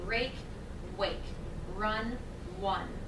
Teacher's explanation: contrast the r sound with the sound they're substituting which is probably W